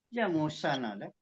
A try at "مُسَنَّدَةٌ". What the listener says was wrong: Tadi saya kedengarannya muson ada. Saya dengarnya muson ya. Musannadah.